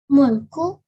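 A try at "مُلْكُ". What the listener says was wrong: And we do not stay on the lam. We just say mulku.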